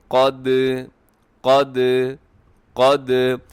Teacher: تو یہاں دال ساکن ہے، اور دال ساکن ہو تو ساتھ قلقلہ بھی ہوتی ہے۔